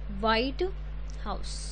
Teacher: ਸੋ ਆਪਾਂ ਸਟ੍ਰੈਸ ਕਿਹਦੇ ਉੱਪਰ ਪਾਇਆ, ਹਾਊਸ ਉੱਪਰ। ਦੈਟ ਮੀਨਸ ਜੋ ਘਰ ਹੈ ਉਹ ਵਾਈਟ ਕਲਰ ਦਾ ਹੈ। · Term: 2 word stress